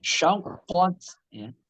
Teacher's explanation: Syaknya biasa, qatnya baru kita tebalkan.